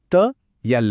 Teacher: जीभ सीधे दांतों को छूती है बिना मुड़े। · इन्हें बोलने के लिए जीभ की नोक ऊपर वाले दांतों के ठीक पीछे लगती है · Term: दंत्य